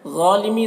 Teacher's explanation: ظا کو پر پڑھنا ہے، یہ حروف مستعلیہ میں سے ہے اور اس میں الف مدہ ہے تو اسے ایک الف کے برابر کھینچیں گے۔